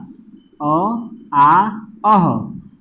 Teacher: कंठ से किसका उच्चारण स्थान हुआ, क वर्ग का, और अ का, आ का, अह का।